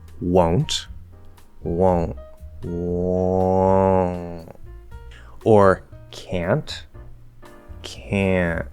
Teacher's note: the n never has to be physically produced as long as you partially nasalize the vowel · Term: partial nasalization